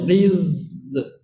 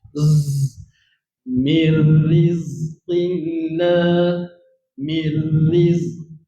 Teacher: Dan kita kena tunaikan hak zai tu dengan safir sahaja. Getar bunyi lebah.